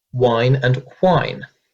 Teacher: This means that these two words, wine and whine, sound exactly the same, where previously they would have been pronounced differently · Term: wine/whine merger